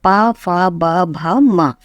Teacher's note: ये पूरा जो है ये ओष्ठ उसका उच्चारण स्थान है